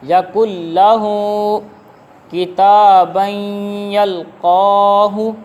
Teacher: اسی طرح یقل لہ کتابا یلقاہ، یہاں پر غنہ ہوا، ادغام بالغنہ ہوگا، یعنی غنہ بھی کریں گے ہوگا بھی ادغام